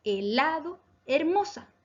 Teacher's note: Palabras graves, helado, hermosa. Acento en la penúltima sílaba.